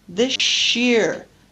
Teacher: coalescent assimilation makes the sound sh so this year z plus y creates the sound zh pleasure